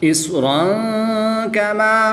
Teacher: 2 زبر کی تنوین کے بعد کاف حروف اخفا میں سے ہے تو یہاں پر اخفا ہوگا یعنی غنہ زمانی کر کے پڑھیں گے